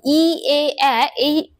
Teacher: আমাদের জিভটা সামনের দিকে এগিয়ে আসে